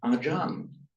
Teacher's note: The final R becomes a N. · the unaspirated ch in Pali and Sanskrit actually becomes a j in Thai. So that's why Acharya turns up in Thai as Ajan.